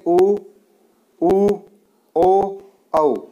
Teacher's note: उ, ओ, औ वर्त की तरह हमारा मुख बनता है या होठ बनते हैं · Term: वर्तमुखी